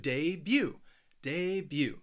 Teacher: it has two syllables and the stress is on that second syllable